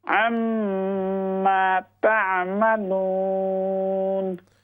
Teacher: عین اور میم میں عین کو کلیئر کریں، میم میں غنہ کریں